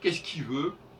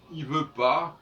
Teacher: souvent, le L est mangé, on n'entend pas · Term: non-prononciation du L